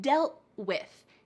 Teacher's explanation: Make sure your tongue is at the stop the top of your mouth. We're not cutting out the T completely. We just need to stop the T sound. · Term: stopped T sound